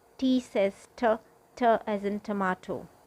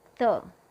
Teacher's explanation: It's pronounced the with the tip of the tongue touching the teeth, the top teeth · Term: soft T